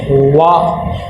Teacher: جی آیت نمبر 4، اس کے اندر دیکھیں والا، واو کے اوپر زبر ہے اور زبر حرکات غیر مدہ میں سے ہے، اس کو نہ ہی لمبا کرنا ہے اور نہ ہی جھٹکا دینا ہے۔ واو زبر واو ادا کرتے ہوئے ہونٹ گول ہونے چاہیے